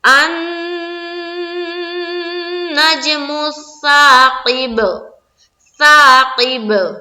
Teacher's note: نون کے اوپر شد ہے تو یہاں پر مشدد کا غنہ کرنا ہے